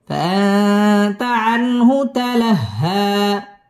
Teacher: ইকফা এখানে গুন্নাহ করে পড়তে হবে।